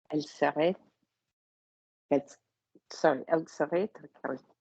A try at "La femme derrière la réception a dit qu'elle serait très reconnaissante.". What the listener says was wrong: So your first half was the best vowel slide you've ever done. You just didn't take the vibration away the whole time.